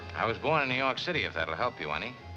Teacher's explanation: Casablanca by the way is practically a rhoticity free zone.